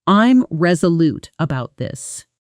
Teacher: when you make a firm, confident statement, your voice typically falls at the end.